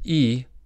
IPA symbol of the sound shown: i